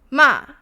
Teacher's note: the fourth one is a tone falling, which starts out very high and falls short and strong. So a dropping horizontal line.